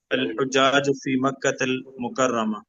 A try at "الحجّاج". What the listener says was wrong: جیم پہ شد ہے،